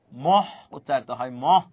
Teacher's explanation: অর্থাৎ ম এর মহাপ্রাণ উচ্চারিত হয়